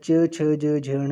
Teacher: च छ ज झ ण जो है वो आपके उच्चारण स्थान जो है उनका तालु है। तालव्या ध्वनियाँ हैं, ठीक है।